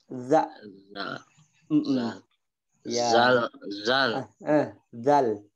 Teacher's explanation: zal ujung lidahnya taruh di gigi